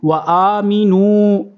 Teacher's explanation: یہ آ کو کھینچیں گے، حروف مدہ